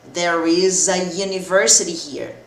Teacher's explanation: Vou usar o a, porque mesmo começando com vogal, o som desse U é som de Y, som de consoante.